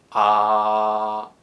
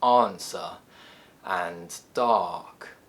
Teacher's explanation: Its technical name is the open back unrounded vowel sound, because our jaw is open, our tongue is back, and our lips are unrounded. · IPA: /ɑ:/